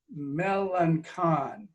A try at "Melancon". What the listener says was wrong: It's close. It's a soft C. It's Melancon.